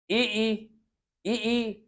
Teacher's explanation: इ ई का प्रयोग होने के लिए तालु का प्रयोग हो रहा है